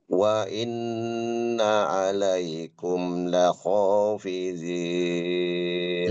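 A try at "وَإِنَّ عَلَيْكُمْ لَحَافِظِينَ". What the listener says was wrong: Laha, ha ini huruf tipis. Jadi jangan ho, kata ho enggak. lahafizin.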